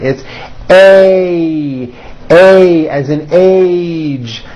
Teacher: If you listen carefully, you will hear that this sound is a combination of two vowel sounds. You start with an A, and then you glide up to an E. A, A. Notice how my mouth also closes a little bit at the end of the vowel. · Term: A sounds